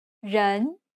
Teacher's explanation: It has a rising intonation and kind of sounds like you're asking a question. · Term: rising tone